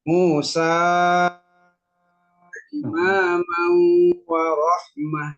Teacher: Kalau mau diwasol nggak boleh 2 harokat. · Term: mad jaiz Munfasil